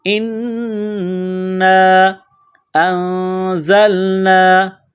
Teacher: نون ساکن کے بعد زا ہے تو آواز ناک میں چھپائیں گے۔ اس ناک میں آواز چھپانے کو اخفا کہتے ہیں۔